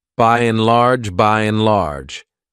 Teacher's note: linking yah to join by and and in by and large she also elided or didn't pronounce the d in and and she did this in order to join it smoothly to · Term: elision